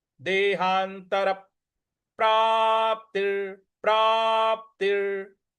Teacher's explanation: त के बाद जो विसर्ग है, प्राप्ति के त के बाद जो विसर्ग है उसका उच्चारण हमें र ले आना है